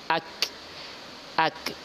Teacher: ada kaf berharokat sukun, berarti ada hamas setelahnya atau ada aliran nafas.